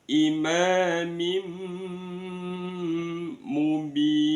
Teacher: fi imam mim ima itu ada mim fatkhah bertemu dengan alif mad asli atau mad thobi'i kemudian imam mim kasratain bertemu dengan mim namanya bacaan idgham bighunah dimasukkan disertai dengan mendengung · namanya bacaan idgham bil gunnah, dimasukkan disertai dengan mendengung